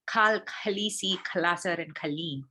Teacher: So you can already see that, all these words actually start with that ka, right? It is different from a regular k, like the regular velar plosive, but this is more of an aspirated variety.